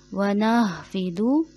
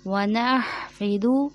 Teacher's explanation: हा हलक के दरमियान से अदा होगा